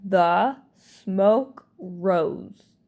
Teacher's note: But now in this word, instead of rose, it's going to be rose. The S is going to sound more like a Z in this word.